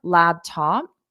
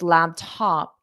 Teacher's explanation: instead of laptop where it comes down it's laptop it just comes up slightly